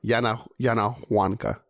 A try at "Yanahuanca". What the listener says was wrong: What, you don't pronounce the H. You don't pronounce the H in Spanish. Yanahuanca.